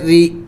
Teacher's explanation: حمزہ با زبر اب، صاد الف زبر صا، را زیر ری، را کو باریک پڑھا جائے گا اس لیے کہ را کے نیچے زیر ہوتا ہے